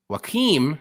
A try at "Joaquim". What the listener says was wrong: It's Joaquim Silva. It's Joaquim. It's Portuguese, so you got to pronounce the J.